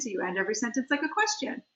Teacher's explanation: upspeak, where you sort of end your every sentence with like a question